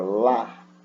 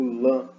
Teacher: Meu véu palatino vai descer, então parte do som sai pela boca, outra parte pelo nariz. É por isso que eu digo lã.